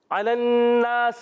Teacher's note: نون مشدد، ایک الف کا غنہ کریں گے